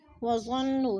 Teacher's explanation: نون مشدد ہے، سختی سے جمع کر پڑھیں گے